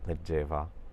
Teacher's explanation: The B sound again became voiced into a V sound. · the (soft) G sound, it shifted from a (hard) G sound which was a change that happened in most Romance languages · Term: voiced B sound